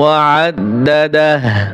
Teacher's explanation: ওয়াকফ করলে হা উল্টা পেশে টান হয় না